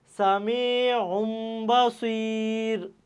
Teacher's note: হয়ে যাইত কিন্তু সামিউন বাসির কেন হইছে কারণ এই যে তানবিন তানবিনের যে উচ্চারণটা সেটা মিম দ্বারা পরিবর্তন হয়ে গেছে কারণ এই তানবিনের পরে কি আসছে তোমার ইকলাবের হরফ একটি বা